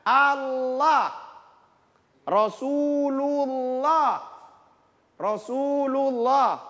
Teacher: Jadi huruf sebelum kata Allah ada berbaris dhamma atau bunyi U, maka dibaca tebal.